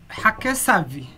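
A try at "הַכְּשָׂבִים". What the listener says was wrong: So we want to actually close a syllable here. Hak sa vim. Hak sa vim. Want to try it again?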